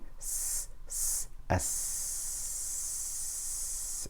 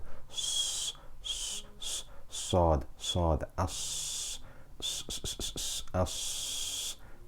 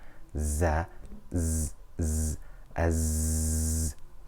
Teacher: Safir refers to the natural whistling sound that is emitted when pronouncing sin, sad, and za. You'll notice whenever you pronounce the sin, s, s, as, there is a whistling sound.